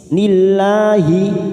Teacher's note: lam jalalah yang didahului kasr kita baca tarik atau tipis